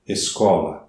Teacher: Eu tenho 6 letras, mas tenho 6 fonemas. O SC não constitui um dígrafo porque eu tenho os 2 sons, do S e do K. · O SC não constitui um dígrafo porque eu tenho os 2 sons, do S e do K. Escola. Então, para que eu tenha dígrafo, é necessário que as 2 letras tenham equivalência apenas de um som.